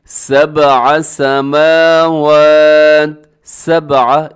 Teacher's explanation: اس میں با کو اپنے قلقلہ کرنا ہے کیونکہ با ساکن ہے، حروف قلقلہ میں شامل ہے، اس کی آواز کو ڈبل کرنا ہے